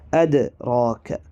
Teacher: എന്നാരും ഓതരുത് അൽ ഖദർ വാ അദറാക്ക അദ്റാക്ക എന്ന പദത്തിലെ ദാലും അതുപോലെതന്നെയാണ് സുക്കൂൻ വന്നതുകൊണ്ട് കൽക്കല ചെയ്ത് ഉച്ചരിക്കുകയാണ് വേണ്ടത്